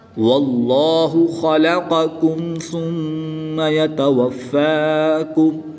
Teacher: واللہ، واللہ خلقکم ثم یتوفاکم، قاف اور کاف کی ادائیگی میں فرق کریں گے۔ قاف حرف مستعلیہ میں سے ہے، اس لیے اس کو پر یعنی موٹا پڑھیں گے اور کاف کو باریک پڑھیں گے۔